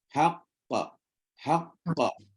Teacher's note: Yang qaf kedua tu kita qalqalah, yang qaf pertama kita syiddah. Kita delay dia.